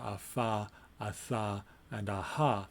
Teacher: Here we have the bilabial, the dental, and the glottal, a fa, a tha, and a ha. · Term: fricatives